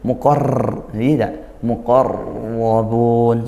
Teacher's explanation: ro itu ada sifat takrir atau getarannya itu ya pengulangan getaran itu. Maka ketika tasydid akhfi takriron lembutkan ya samarkan jangan terlalu seperti kita r Indonesia itu ya muqar i muqarabun seperti itu.